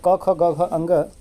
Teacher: घ का जो उचार स्थान होगा वो कंठ हो जाएगा